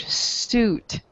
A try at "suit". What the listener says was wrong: okay, I think I'm hearing you say sweet, okay, but it's actually pronounced, the UI sounds like ooh, ooh, suit, suit. Suit. Suit.